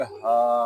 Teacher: हा को हम एक अलिफ तक खींच कर पढ़ेंगे क्योंकि यहाँ पे खड़ा ज़बर है